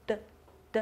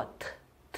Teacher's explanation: 它不是汉语拼音的二声，它是西班牙语的重读符号。它像一个小帽子一样，只戴在元音的头上。它戴在哪个元音的头上，哪个元音重读，就是这样子的。所以这个单词的重读音节是最后一个音节，怎么读呢？对了，读作爸爸爸爸。那是什么意思呢？给大家两秒钟的时间思考的时间。好，答案揭晓。看这幅图片大家都知道了，这幅图片是大头儿子和小头。对了，那刚才那个爸爸的意思就是爸爸，就是中文的爸爸的意思。好，接着我们继续，下一个清辅音读作▁de，▁它的发音读作▁de▁de，▁发音的时候舌尖抵上上前颚。我们发的这个音，注意依然也要和英语的这个字母区别开，英语这个是要送气的，读作▁t▁t，▁ 而西班牙语不送气，西班牙语没有送气的音